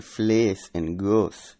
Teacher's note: the raising of the long E and O vowels, as in vlees and goos, into the now vacant E and U positions